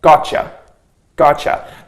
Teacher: a T and A Y together this is pronounced as a CH